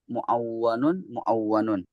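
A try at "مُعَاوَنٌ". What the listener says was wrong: Jika enggak ada tasdidnya, maka ketika mentasrif pun tidak ada tasdidnya ya.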